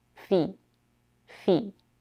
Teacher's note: the vowel in the first syllable is a tense e